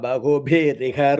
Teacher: So the Visarga and E will change to Ri sound